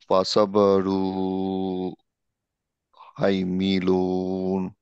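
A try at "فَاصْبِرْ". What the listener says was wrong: না, এটা হচ্ছে জিম, আর তুমি এখানে রুন হবে, তাহলে তুমি পড়ো এবার। এটা জিম আর এটা হচ্ছে রুন, তাই না? দুইটা দুইটা পেশ আছে।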